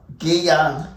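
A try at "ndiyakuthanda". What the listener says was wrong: Ndi with the ND, that's the difference.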